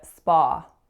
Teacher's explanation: we're saying ah that open low-back vowel